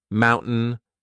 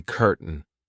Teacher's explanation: in the British version my tongue doesn't even make an attempt to hit my teeth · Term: glottal stop